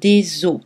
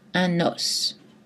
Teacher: Le S final ne se prononce pas dans le mot os au pluriel